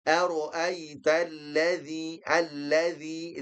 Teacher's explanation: dzi itu pertemuan ujung lidah dengan ujung gigi seri atas atau di mudahnya adalah digigit.